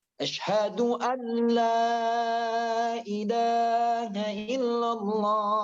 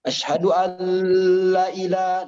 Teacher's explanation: Karena nun sukun bertemu dengan lam itu idgham bila gunnah, tidak boleh dipanjang ya dalam azan.